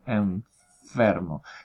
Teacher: hay un contacto o una aproximación, un estrechamiento entre el labio inferior y los incisivos superiores